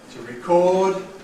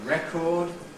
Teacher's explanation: Notice the effect of causing the stress to come on the first syllable, changes from [ɪ] to [e] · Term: strong vowel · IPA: [ˈrekɔːd]